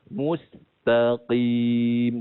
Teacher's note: huruf qaf tidak ada Qalqalah disini sebabkan terlampau nak menjadi huruf qaf dekat takut berbunyi huruf Kaf